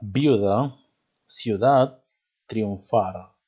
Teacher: se les va a llamar diptongos homogéneos dos vocales cerradas juntas